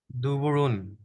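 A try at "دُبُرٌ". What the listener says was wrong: মাশাআল্লাহ, খুবই সুন্দর।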